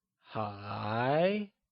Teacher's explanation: is pronounced using a mid rising tone or the second tone